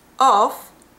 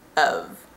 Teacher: f an american speaker pronounces the f in of as the there's no f sound it's a v